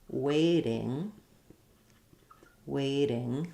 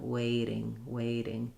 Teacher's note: There's no stop. The flow of air keeps going. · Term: flapped